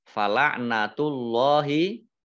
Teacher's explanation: Allahnya dibaca tebal karena harokat di depannya dhomah